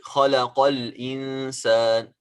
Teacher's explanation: همزة الوصل تسقط عند الوصل. همزة الوصل, it falls down, it disappears when we are joining. خلق الإنسان, we don't pronounce it.